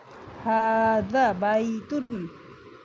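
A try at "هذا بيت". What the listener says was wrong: জালেও একটা মাদ আছে, মানে টেনে পড়ার ব্যাপার আছে। হাজা বাইতুন।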